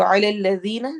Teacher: عین حروف حلقی میں سے ہے، حلق کے درمیان سے ادا ہوتا ہے